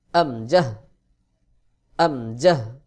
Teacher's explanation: হলকের শুরু থেকে দুইটি হরফ উচ্চারণ হয় এই হা এবং আমজাহ এটার নাম আমজাহ হলকের শুরু থেকে উচ্চারণ হবে